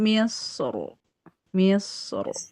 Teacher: Tapi yang misro lebih baik tebal tapi boleh tipis.